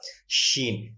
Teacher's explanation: بالکل یہیں سے اسی مخرج کے ساتھ لفظ شین ادا ہوگا۔ شین، بیچ زبان تالو سے مل کر شین ادا ہوتا ہے۔